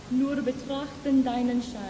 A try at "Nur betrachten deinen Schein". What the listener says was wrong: Now, yeah? Do you know how little you open your mouth?